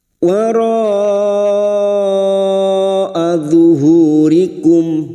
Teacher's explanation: bertemunya mat dengan hamzah dalam satu kalimat mat wajib mutasil. 5 harokat kita panjangkan.